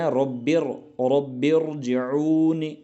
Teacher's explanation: را ساکن جو ہے یہ پر پڑھا جائے گا کیونکہ یہ آئی ہے زیر دوسرے لفظ میں